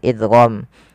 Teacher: ada hukum tajwid berupa memasukkan suara tanwinnya kepada huruf lam yang kita kenal dengan idgham. Nah, tapi idgham di sini tidak boleh disertai dengan gunnah, maka kita namakan dengan idgham bila gunnah.